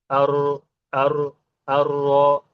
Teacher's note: र जो लेटर है उसमें तकरीर होता है। मतलब कि रिपीटीशन होता है।